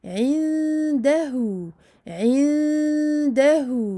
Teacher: Donc, ici, irfa à nouveau, car on a un nun sakin suivi d'un del. Donc, on cache le nun derrière le del. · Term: dissimulation